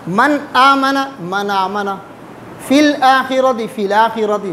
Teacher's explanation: حمزہ کو ہٹا کے اس کے زبر ماقبل ساکن کو دے دیں گے، ساکن کے اوپر وہ زبر پڑھیں گے اور حمزہ کو نہیں پڑھیں گے، اس کو کہتے ہیں نقل حرکت۔